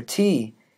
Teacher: for t there is a complete stoppage of air at the alveolar ridge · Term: alveolar stop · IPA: [t]